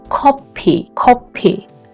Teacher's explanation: The next consonant is ki역, more pressure to k sound